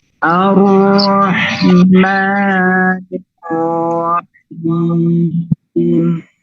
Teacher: Jangan langsung dialirkan huruf ra-nya, bukan ar-ra, tapi ar-rahmanir-rahim. Ada sedikit penekanan sebagai bentuk tasydid, nabr. Ar-Rahmanir-Rahim.